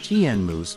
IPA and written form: ˈtɪnəmuːz (Tinamous)